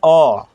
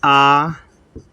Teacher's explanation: जिसको बोलने में ह्रस्व स्वर से दुगना समय लगे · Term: दीर्घ स्वर